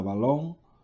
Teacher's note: en la palabra balón, la sílaba tónica es lon